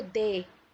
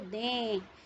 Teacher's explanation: तो जब हम इसे बोलते हैं तो दे, लेकिन जब हम इसे बोलते हैं तो आप देखिए आपकी नाक से भी इसका स्वर, इसके जो ध्वनि है वो वहाँ से भी निकलती है। तो दें, तो आपको एक हल्का सा ऐसी साउंड, एक हल्का सा न की ध्वनि सुनाई देती है।